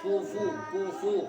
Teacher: इसी तरह हमने बताया था कि जब पेश को अदा करते हैं तो उसमें होठ गोल हो जाते हैं